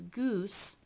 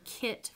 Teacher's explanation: velar fronting before high front vowels